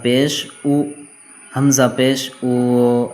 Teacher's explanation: پیش کو معروف پڑھا جائے اور مجہول آواز سے بچا جائے